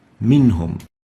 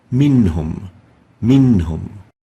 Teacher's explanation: we pronounce the noon clearly without exaggerating the Gunna